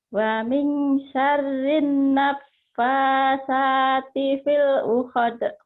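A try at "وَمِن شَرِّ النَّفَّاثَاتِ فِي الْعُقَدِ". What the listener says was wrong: Uqad bukan uhad, uqad, kokok. Uqad. Wa min syarrin nafatsati fil uqad. Ain. Uqad.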